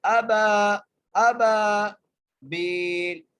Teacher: با کو ایک الف کی مقدار کھینچ کے پڑھنا ہے. ابا ابا بیل با کو بھی ایک الف کی مقدار کھینچ کے پڑھنا ہے کیونکہ یہاں پر جائے مدہ آ گئی ہے.